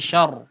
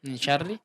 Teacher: di huruf ra-nya coba lebih tipis